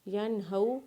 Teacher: یا کو نون کے ساتھ ملاتے ہوئے یا کے اوپر زبر پڑھیں گے، ہا کو واولین کے ساتھ ملائیں گے اور نون کے اوپر زبر پڑھیں گے، اور اس نون کے اوپر غنہ نہیں کریں گے کیونکہ نون کے آگے ہا ہے، اور وقف کرنے کے بعد اس نون کو ساکن پڑھیں گے جس کے اوپر زبر ہے۔